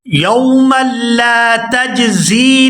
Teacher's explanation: میم کو لام مشدد کے ساتھ ملائیں گے